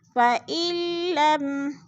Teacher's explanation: فَإِن لَمْ، فَإِل، یہ جو درمیان میں نون ساکن ہے یہ لکھنے میں آتا ہے، پڑھنے میں نہیں آتا ہے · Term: ادغام